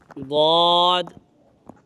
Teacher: حرف حافیہ ضاد، اس کا مخرج زبان کی کروٹ اور اوپر کے داڑھوں کی جڑ سے یہ ایک حرف ضاد ادا ہوتا ہے اور یہ حروف مستعلیہ میں سے بھی ہے، تو اسی وجہ سے اس کو ہم پر بھی پڑھتے ہیں۔